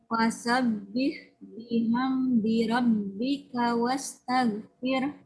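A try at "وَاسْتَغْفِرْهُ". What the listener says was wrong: Bukan tar, tapi taw. Tebal poinnya. Fir. Haknya tidak terdengar. Bukan fir. Bukan ha, tapi pakai ha. Wastaghfir. Fir.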